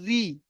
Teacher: জের দিয়ে পড়ছি জের রি, তখন দেখেন মুখ লম্বা হয়ে যাচ্ছে, অর্থাৎ বারিক